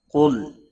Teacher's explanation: قاف حروف مستعلیہ میں سے پور پڑا جائے گا، لام ساکن کو ہلانا نہیں